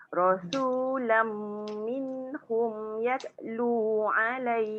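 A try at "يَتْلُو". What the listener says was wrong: Ada bunyi lagi te. Jangan yat. Yat tak mau. Angin je.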